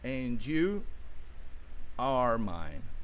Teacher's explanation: Veja que o D junta-se com o Y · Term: connected speech